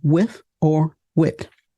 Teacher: You might often hear with, pronounced as an F sound, or as a T, as in toe. So with may be with or wit. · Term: voiceless TH